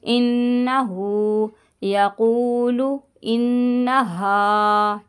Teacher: نون میں شدت کا گنہ کیجیے گا، ہو کو ہلکا سا کھینچیے گا